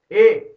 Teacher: ए बोले ना कंठ भी लेगा ए और तालु में भी लगेगा तो कंठ तालु